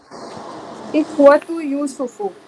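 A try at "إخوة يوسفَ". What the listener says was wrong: ہاں یوسف آئے گا، ہاں زبر آئے گا.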